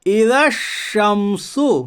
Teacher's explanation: اذا الشمس، اذا الشمس، کرے ہجا، حمزہ زیر ای، ذال شین زبر ذش، شین میم زبر شم، اذا الشم، سین پیش سو، اذا الشمس، کرے اجرا، الف لام تعریف کے بعد حروف شمسی کے 14 حرفوں میں سے شین ہے، اس لیے ادغام شمسی ہوگا، یعنی الف اور لام کو نہ پڑھیے بلکہ بعد والے حرف سے ملا کر پڑھیے